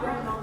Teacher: So the D is gone.